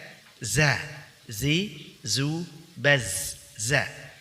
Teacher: za itu tidak memiliki sifat al-hams, tapi kebalikannya yaitu sifat al-jar. · Huruf za keluar dengan meletakkan ujung lidah paling depan pada dinding dua gigi seri bagian bawah, sehingga suara keluar di antara gigi seri atas dan gigi seri bawah. Perhatikan, sini ada ujung lidah, kemudian ini ada gigi seri bagian bawah.